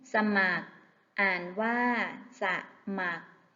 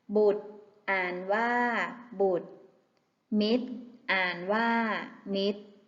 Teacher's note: คำที่มีรเรืออยู่ตามหลังตัวสะกดจะไม่ออกเสียงรเรือ